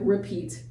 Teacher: But sometimes we make the E kind of schwa, the E towards like repeat. It has a less emphasis on the E, the first E